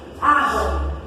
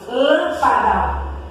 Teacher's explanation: A sílaba tônica é a antepenúltima. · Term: Proparoxítonas